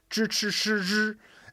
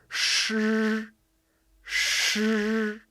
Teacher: There's zh, ch, sh, zh, and those have a retroflex tongue position. So naturally, when you put your tongue in those positions and enunciate the initial like we teach in pronunciation mastery, you end up getting this sort of wind tunnel that's blocked by your tongue.